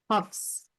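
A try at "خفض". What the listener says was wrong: खफ्द, हफ्स नहीं बेटा, वो खफ्द है, खफ्द। अरबी वाला देखें आप। खफ्स नहीं बेटा, खफ्द, इट्स दॉद, राइट।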